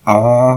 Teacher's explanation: the first a is ah with a high uh sustained high pitch